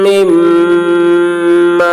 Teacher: میم مشدد ہے دونوں میم میں غنہ ہوگا